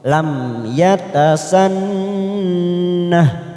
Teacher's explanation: mim sukun izhar syafawi kita baca jelas tanpa mendengung